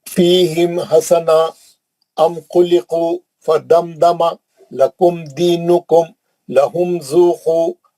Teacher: میم کو جلدی پڑھ رہا ہوں, کہیں پہ بھی میم پہ نہیں رک رہا ہوں, غنہ نہیں کر رہا ہوں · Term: اظہار